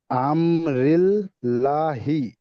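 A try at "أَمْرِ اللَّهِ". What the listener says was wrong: এখানে লা কেন পড়ছেন বলেন তো? লা কেন পড়ছেন সবাই দেখেন। উপরে নিচে নয়, আল্লাহ শব্দে লাম মুসাদ্দাদের আগে, আগের অক্ষরে।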